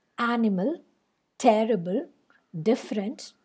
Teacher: the first syllable is a stressed syllable and the next two are unstressed syllables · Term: dactyl